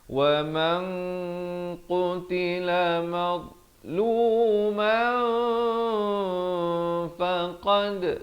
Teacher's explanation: Di sini ikhfa hakiki, samarkan 2 harakat.